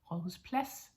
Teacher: as you can hear, we don't say the D, yeah? So that's another one that we don't pronounce because it's silent.